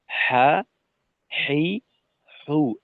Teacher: আর হাটা হবে হলকের মধ্যখানের উপরের অংশে।